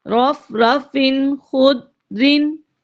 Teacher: اس حصہ میں پہلے رف رفن ہے، فا کے نیچے دو زیر ہیں یعنی تنوین ہے، اور اس کے بعد خا آ رہا ہے جو کہ حروف حلقی میں سے ہے، لہذا غنہ نہیں کریں گے، بغیر غنہ کے ظاہر کر کے پڑھیں گے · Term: اظہار